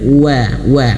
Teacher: karena huruf w ini memiliki sifat Lin lembut yaut menyunkan karena huruf wau itu makhrojnya itu memonyonkan bibirnya